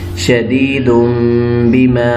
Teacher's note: جو شدیدن کا نون تھا اس کو ہم نے میم میں بدل دیا. شدیدم، با زیر بی، میم زبر الف ما بما شدیدم بما.